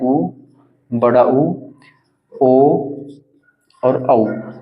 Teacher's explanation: वृत्ताकार स्वर होते हैं जिनमें होठों को गोल करके बोला जाता है इनके होठों को गोल मुख को गोल करके बोला जाता है